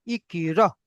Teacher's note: হামজার উপরে সাকিন এসেছে তাই হামজাকে ঝাটকা দিয়ে পড়তে হয়